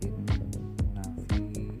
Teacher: Nah, di sini ada nun bertasydid, itu hukumnya adalah gunnah, dibaca gunnah ataupun mendengung. Cara membacanya harus ditahan 2 harakah